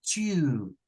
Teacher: no es como tu, es chu, como que le agreguen una ch, así como una H hacia el final